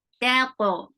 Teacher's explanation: Keep ta light. To heavy, and give the qalqala on to.